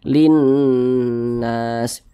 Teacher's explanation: Karena cara membaca huruf lamnya itu dibaca idgham. Jadi ini huruf lamnya ini kan dia tidak dibaca nih, tidak dibaca langsung masuk ke huruf nun. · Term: alif lam syamsiah